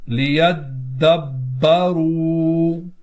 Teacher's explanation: دو حرف قلقلہ ایک ساتھ ہیں، دونوں میں جمع کریں گے، دال میں بھی اور با میں بھی